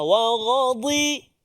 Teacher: Kemudian dha tepi lidah. Wa ghadi. Jangan pergi hujung lidah jadi dal.